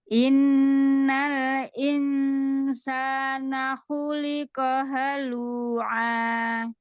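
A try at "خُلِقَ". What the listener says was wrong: Koknya terbelakang lagi khu. Khu, pangkal lidah diangkat. Khu, pangkal lidah diangkat. Suara ke langit atas. Ko juga sama dengan kho. Ya, dorong ke depan suara.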